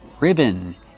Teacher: It's two syllables. Put the stress on the first syllable. Ri ribbon. Use a short I sound like this.